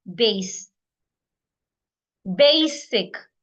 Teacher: the S there retains its sound it doesn't change to zed